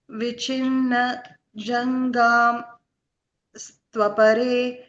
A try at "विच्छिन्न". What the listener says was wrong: Vichinna. You pause there a little bit. Vichinna. That way you won't miss that ich there.